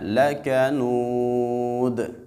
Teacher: جب ہم نے لکنود پہ وقف کرنا ہے تو حالت وقف میں اس کی دو پیش ختم ہو جائے گی